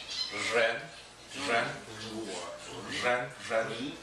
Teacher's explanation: This is a R sound. It's not really like a R like they do in Spanish, like the Latin languages. It's almost like a vibration.